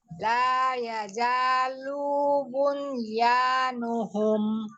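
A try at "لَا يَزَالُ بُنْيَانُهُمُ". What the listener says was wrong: Lunya pendek. Lunya pendek ya. La yazalu bunyanuhum. Zai. Hurufnya zai, zizu, ada as-sofir. La yazalu bunyanuhum.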